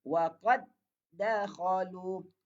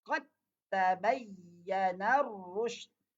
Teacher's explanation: Jadi tak boleh hilanglah bunyi qalqalahnya sebab dah ada idgham. Idgham ni dia menggugurkan qalqalah yang ada pada huruf dal itu.